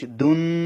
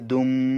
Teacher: তানউইনটাকে আমি মিম করে দিয়েছি, কারণ তানউইনের পরে বা আসার কারণে। এই যে দেখতে পাচ্ছেন আপনারা ইকলাব, অর্থাৎ তানউইনটা মিম দিয়ে পরিবর্তিত হয়ে গেছে।